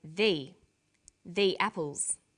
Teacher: when the comes before a vowel sound we say thee